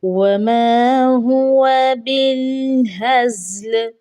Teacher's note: واؤ کو ایک حرکت کے برابر، زبر کی حرکت کے برابر پڑھا جائے گا